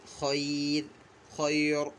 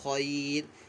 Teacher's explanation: اور جب ہم وقف کریں گے نا تو یہ را ساکن ہو جائے گا، اور را ساکن سے پہلے آپ دیکھیں گے یہاں پہ یا ساکن ہے نا، تو ہم اس را کو جو ہے وقف کی صورت میں باریک پڑھیں گے، خیر، خیر، را کو پر نہیں پڑھنا بلکہ باریک پڑھنا ہے